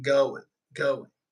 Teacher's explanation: the G is not there the G is not existent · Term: drop the G